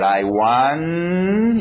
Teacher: Agora, tendo essa divisão, então, eu posso fazer I want, e nota que a sua entonação está subindo aqui, ok? I want, eu não falei o T ainda, porque eu não sei qual vai ser a próxima palavra. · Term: o T está esperando